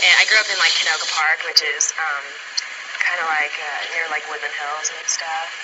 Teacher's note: in her speech sample we could hear the glottalization and questioning intonation that is associated with the west coast dialect